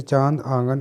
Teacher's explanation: अनुनासिक, इसका उच्चारण नाक और गले दोनों से होता है।